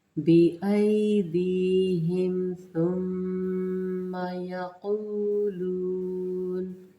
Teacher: सुम्मा मीम मुशद्दद, गुन्ना आएगा तो यहाँ पे आपने गुन्ना लाजमी करना है